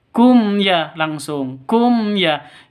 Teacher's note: Ya mim matinya jelas, ya-nya juga jelas karena izhar safawi.